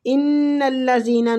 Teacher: ان الذین نون مشدد پہ غنہ کریں گے